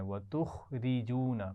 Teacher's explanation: وتخرجون، اس میں را کو باریک پڑھنا ہے